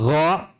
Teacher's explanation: makhraj huruf kha dan gha itu dari tenggorokan bagian atas